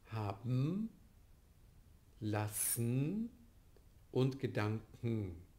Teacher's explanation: Der Ausfall des Schwa ist eine Elision. Die Angleichung des Nasals an den vorhergehenden Laut ist eine Assimilation.